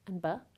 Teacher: English has two bilabial stops